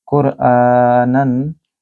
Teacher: قاف کو اپنی زبان کے پچھلے حصے سے ادا کریں اور موٹا پڑھیں. کو لمبا کریں کیونکہ حمزہ کے اوپر کھڑی زبر ہے.